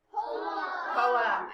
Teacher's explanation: The accent goes in the beginning.